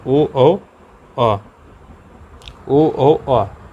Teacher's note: ओठ और कंठ के मिलन से इन 3 का निर्माण होता है।